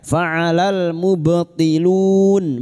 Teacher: huruf ba yang mati asli di tengah kalimat qalqalah sugro, jangan lupa dipantulkan.